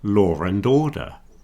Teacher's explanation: So sometimes we say law and order when we're not really supposed to, but you'll hear that R reintroduced. That's an intrusive R.